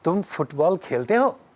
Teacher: Okay, तुम फुटबॉल खेलते हो? If you are putting the rising intonation in the verb खेलते हो, that is what makes it sound like a question.